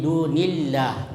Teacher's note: Kemudian yang ketujuh, ya, dunillah, ya, dunillah itu ada lafzul jalalah, huruf sebelumnya berbaris kasrah, maka itu disebut lamul murakkakah, ya, artinya lam dibaca tipis. Jadi dunillah, bukan dunillah, tapi dunillah.